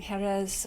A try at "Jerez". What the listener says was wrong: There's no J, like Jose. And they say it like a TH on the end instead of the Z, eh?